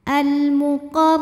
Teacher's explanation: huruf ro dibunyikan secara tafkhim karena rnya ini berbaris di atas yaitu baris fathah cara membacanya ditebalkan pangkal lidah dinaikkan